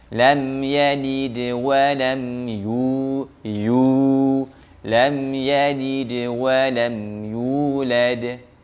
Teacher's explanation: sempurnakan dhammahnya manyun, apalagi ketika itu ada waw sukun, maka makin jelas dhammahnya dan suaranya tidak boleh ke hidung.